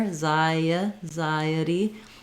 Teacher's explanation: In anxiety, because I'm moving from the I to the unstressed I may have a little bit of a gliding sound in there